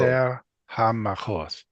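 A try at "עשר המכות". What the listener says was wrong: Hamakoth, regular K. Eser Hamakoth.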